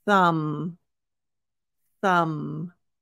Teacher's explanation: the th if you remember from the th master class this is going to be the unvoiced so you should feel air